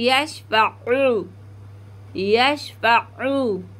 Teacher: ऊ नहीं करना हमें, हमें आइन की आवाज़ निकालनी है। यहाँ पे हमज़ा पढ़ती हैं ज़्यादातर बहनें ना, तो हमें आइन की आवाज़ निकालनी है, यशफ़अू, यशफ़अू।